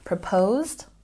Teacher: let's double check our pronunciation proposed we stress the second syllable